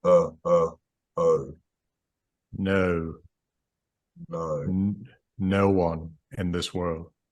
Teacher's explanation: the first element of no might have a tiny bit of lip rounding